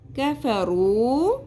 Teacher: کاف کو باریک رکھنا ہے، قاف کی طرح پر نہیں کرنا